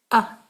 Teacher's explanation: पहले सांस बंद और कोई आवाज नहीं फिर अचानक से सांस के बगैर आ कहें। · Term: हमजा